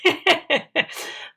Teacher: so the voice is very hoarse